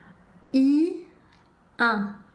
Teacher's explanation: Pour prononcer correctement le son 1, la bouche prend la même forme que pour prononcer le son I et ensuite le son devient nasal